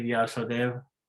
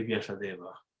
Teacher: omitting the last vocal of a name this is not sanskrit this is hindi